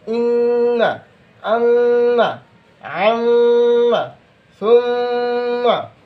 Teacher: নাকের পাশি হইতে গুন্না উচ্চারিত হয়